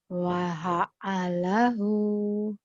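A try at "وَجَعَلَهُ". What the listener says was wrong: Waha'alahu. Waha titiknya satu. Oh, titiknya gabung ya. Wajah. Waja'alahu.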